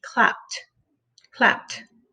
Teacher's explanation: the p is unvoiced you can feel it because it's just air flowing out out of your mouth to make the sound · the ed makes the t sound, and the e is silent.